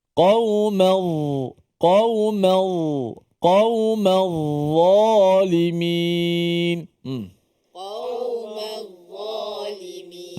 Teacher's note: Huruf dha, pastikan hujung lidah kita mesti keluar sedikit. Diletak di bawah gigi kacip atas. Hujung gigi kacip letak atas hujung lidah kita.